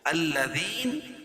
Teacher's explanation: یا ساکن سے پہلے زیر ہے یا مدہ اس کو ایک الف کے برابر کھینچ کے پڑھیں گے